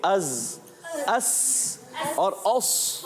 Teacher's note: صاد موٹا رہے گا، سین باریک رہے گا، زا بھی باریک، مگر سیٹی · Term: حروف صفیریہ